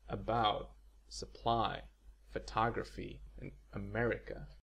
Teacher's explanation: a completely unstressed vowel found abundantly in English basically if you relax your entire mouth and make a noise